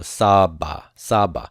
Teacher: on a syllable form here and I have a vocalic ending I want to keep the accent on the first root letter